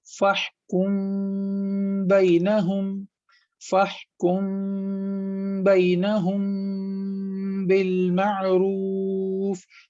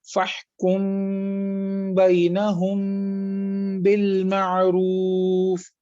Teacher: ہم میم کو واضح نہیں پڑھ رہے، میم کو صاف نہیں پڑھ رہے، بلکہ ہم میم کو ناک میں لے جا رہے ہیں۔